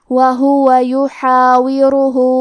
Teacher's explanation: کلمت یحاورہ میں آخری میں ہا پہ الٹا پیش ہے اور اس پہ مد کا بھی علامہ ہے، یہاں حکم ہے مد صلہ کبرا، ہمیں اپنی آواز 2 سے 4 مد کے برابر لمبی کرنا ہے